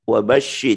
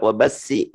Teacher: Shin ini ada tafasyi ya, jadi harus suaranya anginnya banyak di dalam ya. Suaranya ada dalam wabashi, jangan sampai wabasi ya.